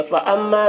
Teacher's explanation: میم مشدد ہے، یہاں پر غنہ کر کے پڑھیں گے